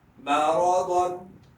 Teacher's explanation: شروع میں میم باریک ہے، را اور ضاد موٹا پڑا جائے گا